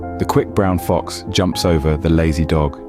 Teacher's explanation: The stress pattern in this sentence falls on the words quick, fox, jumps, over, and dog. The remaining words the, brown, the, and lazy have a lesser stress.